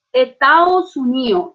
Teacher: Que la persona estaba indignadísima con algo que había hecho Estados Unidos en el medio de una protesta y decía, Estados Unidos, o sea, debilitamiento de las oclusivas llegó a tal punto que quedan solo los centros vocálicos de las sílabas